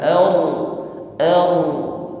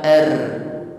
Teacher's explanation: Ra sukun, sebelumnya ada fathah. Maka getarkan dengan getaran yang tafkhim, tebal. Ar, bukan r.